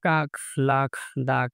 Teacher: জিভের পেছনের অংশ উঁচু হয়ে আলজিভের মূলের কাছাকাছি নরম তালু স্পর্শ করে। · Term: জিহ্বামূলীয়